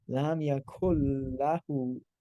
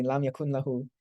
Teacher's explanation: It means that you ignore the noon and you double it into the lam.